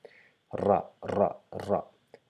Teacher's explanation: in our case we vibrate the end R, R, yeah, ra, ra, ra, and we round our mouth.